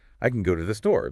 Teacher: You highlight the content words, go, store, and you almost swallow the function words. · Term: reduces the function words